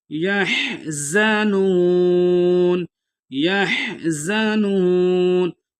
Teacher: ولا ہم یحزنون، یحزنون، یا کو حا کے ساتھ ملا کے پڑھیں گے، زا کو سیٹی سے ادا کریں گے، یعنی جس طرح سیٹی کی آواز آتی ہے اس طرح ادا کریں گے۔ یحزنون، واو مدہ ہے، ایک الف کی مقدار کھینچ کے پڑھیں گے۔